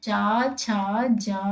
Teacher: तालव्य जो होते हैं उनको, उनका जब हम उच्चारण करते हैं तो मुंह के भीतर के छत्त का पिछला भाग का यूज होता है